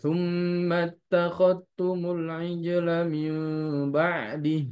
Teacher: Oh, ternyata Imam Syu'bah dia didegomkan, tidak dibaca zalnya langsung ke huruf ta, idgham kamilan